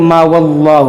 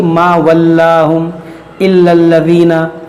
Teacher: ये लाम यहाँ पर ज़बर है लेकिन इसको बारीक पढ़ेंगे, इसको मोटा नहीं पढ़ेंगे